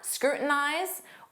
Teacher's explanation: Native speakers will often drop that T and form a flap T, and it will sound like scrutinize.